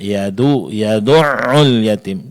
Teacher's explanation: Dal di sini tipis, jangan ditebalkan karena dia akan mirip nanti dengan huruf dad ya. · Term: huruf dal ditipiskan